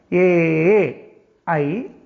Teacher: കണ്ഠവും താലുവും ഉച്ചാരണ സ്ഥാനമായുള്ള വർണ്ണം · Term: കഠതാലവ്യം